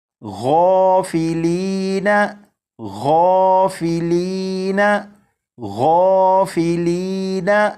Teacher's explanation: یعنی غین کو پر یعنی موٹا پڑھیں گے